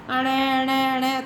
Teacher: वर्ग का जो हमारा पांचवा वर्ण है जो अणा अणा अणा करके पढ़ते हो, उनका उच्चारण स्थान क्या है? नासिका होता है।